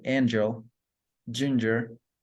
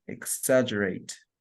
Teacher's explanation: The next affricate consonant is J, which is palatal, affricate, and voiced.